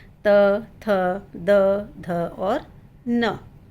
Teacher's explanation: इन सब को उच्चारण करने में हमारी जीभ को हमारे मुंह के अंदर वाले दांतों के पीछे वाले भाग को स्पर्श करना ही होता है। इसके बिना हम इनका उच्चारण नहीं कर पाएंगे। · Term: त वर्ग